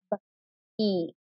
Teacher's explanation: i kept my b really crisp i didn't add a schwa sound like buh